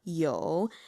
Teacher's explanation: So 有, that's the fourth tone, the third tone, that vocal fry